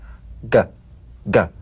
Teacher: The voiced tongue back plosive consonant G. Place the back of the tongue in gentle contact with the soft palate.